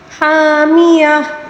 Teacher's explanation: وقف کے دوران گولتا کو گول ہا کے ساتھ تبدیل کر کے پڑھیں گے